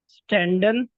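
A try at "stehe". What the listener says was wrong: उसको रहने दे, एंड वाला, हाँ स्टेहन होता है, स्टेहे।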